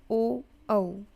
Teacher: गले से आवाज़ आ रही है और होंठों से आ रही है, ओ औ। तो ये हो गया कंठ ओष्ठ।